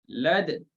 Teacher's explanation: Lepas matikan dal, ismamkan dia. Lad. Kemudian muncung.